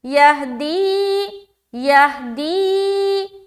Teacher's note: یا ساکین اس سے پہلے زیر ہے یا مدہ ہو رہا تو دی میں کھینچیں گے